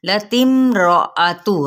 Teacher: रॉ पुर होगा, रॉ ज़बर है